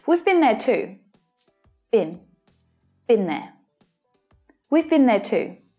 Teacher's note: in past participle form, the vowel sound is often shortened to been. Instead of been, it's been.